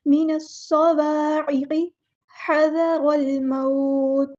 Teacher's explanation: हा को वाज़ेह अदा करना है मिडल थ्रोट से, मुस्तहलक से